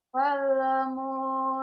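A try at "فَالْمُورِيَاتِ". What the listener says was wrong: pale pale fal mu jangan ada e-nya.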